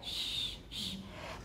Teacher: We're also lip rounding, although it's not all the way to oo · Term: Palato-alveolar fricative